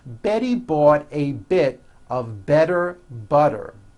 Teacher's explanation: all the T's are pronounced as D's because they fall between vowels